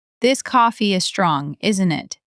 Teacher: falling tone says, we're in this together.